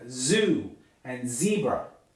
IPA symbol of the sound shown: z